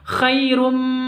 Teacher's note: dengung karena Idgham Bighunnah masuk dengan mendengung